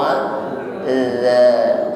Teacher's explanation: Wa dha, bukan za, tidak berdesis, bukan za, tetapi wa dha, ujung lidah bertemu ujung gigi. Mohon maaf, ujung lidahnya sedikit keluar. Wa dha, ya, jangan ditarik ke dalam.